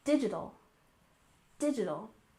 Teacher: we stress the first syllable and we tend to soften that t sound